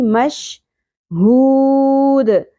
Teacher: ہا کو اقصی حلق سے گہرائی کے ساتھ ادا کرنا ہے